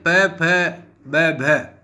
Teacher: दोनों ओष्ठों से जो ध्वनियां उच्चरित होती है वो द्वयोष्ठ कहलाती है। प फ ब भ ये ध्वनियां द्वयोष्ठ ध्वनियां हैं।